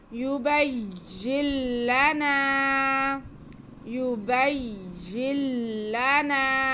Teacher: इदगाम बिला गुन्ना, गुन्ना नहीं होगा, सिर्फ हम नून को लाम में मिला देंगे।